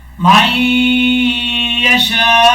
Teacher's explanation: وقف کرتے ہوئے حمزہ پر جھٹکا نہیں دینا اور حمزہ کی آواز لازمی آنی ہے · ایک الف کی مقدار غنہ بھی کیا جائے گا. یہ مد متصل ہے, اس کو 2.5 الف کے برابر لمبا کریں گے